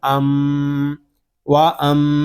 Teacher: میم شدد ہے، اس میں غنہ ہوگا اور میم کو آگے سین کے ساتھ ملا دیں گے کیونکہ سین مشدد ہے۔